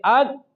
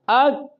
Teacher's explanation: ہم صفت شدت کو قوی سمجھ کر اس میں آواز بند کر دیتے ہیں، جیسا کہ اک، تو وہ ہامس کی وجہ سے تھوڑا سا سانس جاری کرتے ہیں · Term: کاف